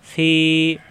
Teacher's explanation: ফাজের ফি, ফিমেল বিয়ের সাথে ফি, ফি উপরে দাঁতের আগে আর নিচে ঠোঁটের ফেটে লাগবে, ফি দুই ঠোঁট একাত্র হবে না